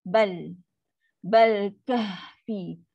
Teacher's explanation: Ha sukun, ada sifat angin yang lepas. Ha level bawah, lepas angin dulu. · Ini adalah qamariyah. Jelas. Jelaskan huruf lam yang sukun.